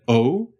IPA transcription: oʊ̯